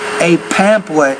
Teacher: you have to pronounce the p with more air